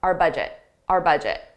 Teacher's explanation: I pronounce it just as a very unstressed R